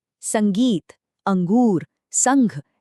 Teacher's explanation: इनमें जो बिंदु लगा है वह एक नासिक्य ध्वनि पैदा कर रहा है। मतलब एक ऐसी आवाज जिसके उच्चारण में हवा नाक से निकलती है। बस यही अनुस्वार का मुख्य काम है।